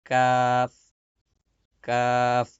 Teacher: জিহ্বার গোড়া থেকে একটু আগে বাড়িয়ে তার বরাবর উপরের তালুর সঙ্গে লাগিয়ে উচ্চারিত হয় কাফ।